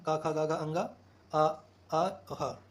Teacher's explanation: क वर्ग में कंठ से बोला जाता है।